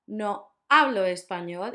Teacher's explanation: the H doesn't make a sound